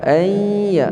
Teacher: bahagian tengah lidah kita angkat ke langit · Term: huruf ya